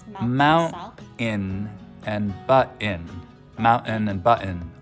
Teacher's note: You'll also hear mountain and button, mountain and button a lot in Utah, especially among younger speakers with just a pure glottal stop for that T sound